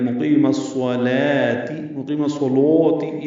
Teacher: لام نہیں پڑھیں گے، صاد پر پڑھیں گے، جلدی پڑھیں گے، لام کو دو حرکات لمبا کریں گے، لام باریک پڑھا جائے گا